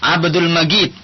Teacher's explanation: Kalau Mesir misalnya jim itu sering dibaca ghim. Jadi kalau kita bilang di sini misalnya Abdul Majid, tapi kalau orang Mesir Abdul Majid, seakan-akan seperti huruf ghin.